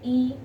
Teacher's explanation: ई बोलेंगे तो आपकी जीभ आगे की ओर आएगी। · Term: अग्रस्वर